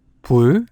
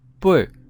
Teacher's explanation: plain consonant B has a lower pitch than the other two consonants